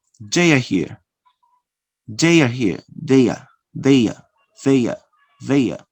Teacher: You use the consonant ya to connect again two vowels.